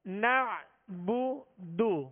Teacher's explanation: بغیر کھینچے بغیر جھٹکا دیے، معروف ہونٹوں کو کامل گول کر کے بغیر کھینچے ادا کرنا ہے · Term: دال کے پیش